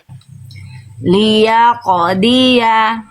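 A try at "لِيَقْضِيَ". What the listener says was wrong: Itu dotnya masih masih kurang tebal, ya. Tebalkan lagi Bunda. Dot itu adalah huruf yang tebal. Salah satu kesalahan yang sering kali terjadi ketika melafalkan huruf dot adalah apa? tidak dilafalkan dengan kadar tebal yang maksimal atau sempurna, maka maksimalkan, sempurnakan.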